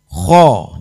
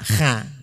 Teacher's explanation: Sehingga fathahnya dibaca a, kho, tidak kha, tapi kho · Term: tafkhim